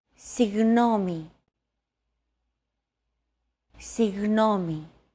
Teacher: To get that sound right, your tongue and the back part of your mouth should be barely separated from each other while you blow a steady stream of air between the small separation. Another approach is to try to pronounce a G as if an H sound were to follow after it and hold that sound while you exhale. · try to pronounce a G as if an H sound were to follow after it and hold that sound while you exhale. The after sound created by that H is what you're looking for.